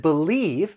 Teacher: that you may have noticed is that when i said believe i'm kind of prolonging that stressed syllable that second syllable